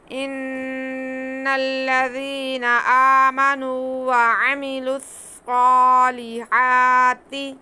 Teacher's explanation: اس کے بعد آ پہ بھی کھڑا زبر ہے، اسے بھی ایک الف کے برابر کھینچنا ہے۔ صاد کو موٹا کر کے پڑھنا ہے، کیونکہ یہ حروف مستعلیہ ہے